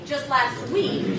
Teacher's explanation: Since week is stressed, it's going to be longer.